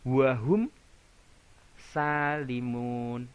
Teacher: ketika mim sukun bertemu dengan sin tidak mendengung, tidak samar-samar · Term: idhar safawi